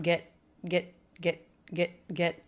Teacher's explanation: I'm reducing that vowel it's not really e it doesn't have a stressed feeling it feels flat to me